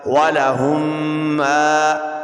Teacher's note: میم الف زبر ما، ولہم ما. یہاں پہ میم ساکن کے بعد دوسری میم آئی ہے تو یہاں ادغام شفوی ہوگا